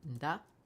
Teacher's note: Big is U, pre-nasalized D, A, glottal stop